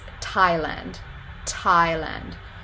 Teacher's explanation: So that is an alveolar voiceless stop, and it's aspirated, so you get that little puff of air. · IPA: [tʰ]